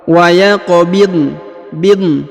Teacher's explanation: Huruf dha tidak dipantulkan ya karena dia bukan termasuk huruf pantul atau huruf qalqalah.